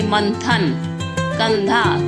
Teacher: अनुस्वार यानी कि अंग की बिंदी, इसका उच्चारण हम नाक के द्वारा करते हैं। जैसे मंथन, कंधा, तो यहाँ पर हम अंग की जो बिंदी है ये हम नाक से उच्चारण करते हैं।